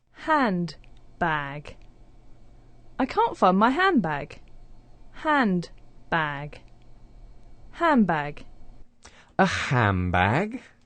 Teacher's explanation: we start off with three consonant sounds in a row now because of elision the d sound disappears · because of elision, the d sound disappears. That puts the n sound next to the b sound, and it starts to change to a m.